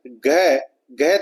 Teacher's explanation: घ बोलोगे तो दोस्तों जीभ है वो तालु से नहीं टकराएगी